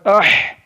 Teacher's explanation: तो अलिफ लगा के हा में पढ़े तो गौर करने से मालूम चला हल्क के दरमियान वाले हिस्से से अदा होता है। हा हल्क के दरमियान वाले हिस्से से अदा होता है